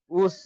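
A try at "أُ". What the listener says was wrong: প্রত্যেকটা শব্দে এই উস টুস হুস এই দন্তেশ্ব নিয়ে চলে আসছেন, দন্তেশ্ব আসবে না। প্রত্যেকটা শব্দে আপনার এই দন্তেশ্ব স উচ্চারণ হয়ে যাচ্ছে, উস পুস এই দন্তেশ্ব লাস্টে, এইটা প্রত্যেকটা শব্দে চলে আসছে, এটা আসবে না।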